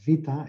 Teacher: the Greek letter beta was pronounced vita, it had become a fricative